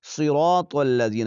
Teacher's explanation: صاد کو موٹا پڑھیں گے، را بھی موٹا پڑھا جائے گا، اور طا کو آپ نے باریک نہیں پڑھنا